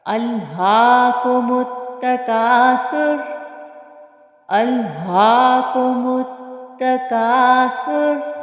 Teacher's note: پھر میم کو ہم تا سے ملا رہے ہیں، الف اور لام سائلنٹ رہے گا، اور سا کو ہم نرمی سے ادا کریں گے، اور را کو پر پڑھیں گے